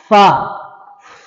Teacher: اوپر کے دانتوں کا کنارہ نیچے کے ہونٹ سے مل کر فا ادا ہوتا ہے۔